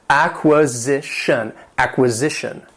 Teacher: this word has four syllables, and the stress is on that third syllable.